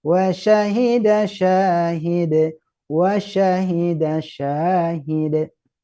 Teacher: Mithlihi beda juga, tapi kita fokus dulu nih sya-nya di tengah lidah.